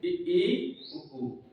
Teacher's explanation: अब आता है सम्रत, जिसके उच्चारण में मुंह पूरी तरीके से बंद रहे, खुले। जिसके ऐसे स्वर जिनके उच्चारण में मुंह पूरी तरीके से बंद रहे, खुले नहीं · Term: समृत